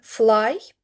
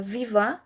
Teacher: we place the upper teeth on the lower lip. Therefore, they are labod dental fricatives.